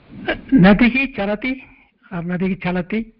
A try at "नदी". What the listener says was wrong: नदी न नदी दीर्घ नदी